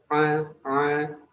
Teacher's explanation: huruf ain tidak sama seperti huruf hamzah, ain termasuk tenggorokan bagian tengah. Dia juga punya sifat tawassut, lunak ketika diucapkan a.